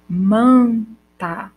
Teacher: Manta, eu não vou ter o som do N e nem do M aí. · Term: vogal nasal